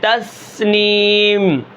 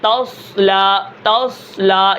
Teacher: سین کے اندر سب سے زیادہ سیٹی ہے اور صاد کے اندر سب سے کم سیٹی ہے۔ ان کو حروف صفیریہ اس لیے کہتے ہیں کہ یہ سیٹی والے حروف ہیں اور صفیر کا معنی آتا ہے سیٹی کے۔